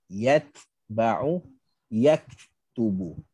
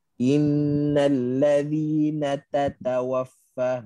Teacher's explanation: Kerana ta dengan kaf, ta dengan kaf, bila dia mati, ada angin.